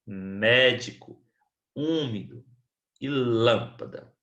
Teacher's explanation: Temos também as proparoxítonas, que é quando nós temos a antepenúltima sílaba tônica